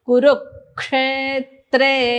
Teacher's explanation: रु वरती आघात आहे